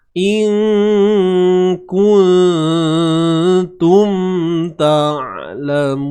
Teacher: Mim mati bertemu ta. Izhar. Izhar ni jelas.